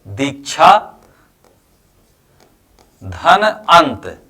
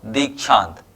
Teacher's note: बड़ा आ यानी इसको दीर्घ आ कहते हैं और धन आ तो दीर्घ आ और ह्रस्व आ मिलकर के यहां हुआ दीर्घ आ